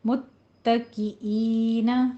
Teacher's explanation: اینا میں آپ نے عین کا ساؤنڈ نہیں لانا، حمزہ رکھنا ہے